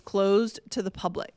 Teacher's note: It's closed to the public. I blended the D and the T sound